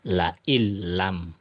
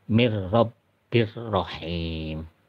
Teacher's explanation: Jadi nun mati atau tanwinnya langsung melebur ke dalam huruf lam, tapi tidak dipanjangkan. Nun matinya tidak terbaca. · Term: idgham bila guna